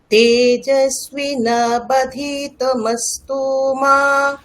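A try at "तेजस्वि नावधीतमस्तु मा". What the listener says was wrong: না না, তামাস্তু এখানে টান হবে না, তামাস্তু মা। আপনি ভুল ধরতে পারছেন, কোথায় ভুল হচ্ছে? না, মাটাকে টানতে হবে, আপনি তুটাকে টানছেন, আপনি এরকম বলছেন তেজস্বী নাবধিতমস্তু মা, আপনি এরকম বলছেন।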